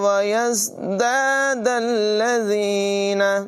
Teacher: یہاں زا کو سیٹی کے ساتھ پڑھیں گے۔ زا اور زال میں فرق ہی ہے کہ زال کو بغیر سیٹی کے اور زا کو سیٹی کے ساتھ پڑھتے ہیں۔